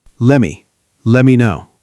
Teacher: The first and most important reduction is let me, which becomes lemme.